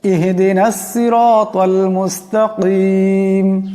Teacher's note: বড় কাফ আছে, আওয়াজটা গলা থেকে আনতে হবে। শুদ্ধ উচ্চারণটা হবে ইহদিনাস সিরাতাল মুস্তাকিম, ইহদিনাস সিরাতাল মুস্তাকিম, সিরাতাল্লাযীনা আন'আমতা আলাইহিম, সিরাতাল্লাযীনা।